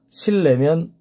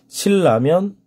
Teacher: 리을 앞에 니은 리을 뒤에 니은 다 리을 리을이 된다 저기 보면 비음 니은이 앞이나 뒤에 오는 뉴 리을의 영향을 받아서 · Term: 유음화